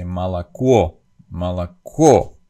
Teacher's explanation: the accent is on the last syllable in this word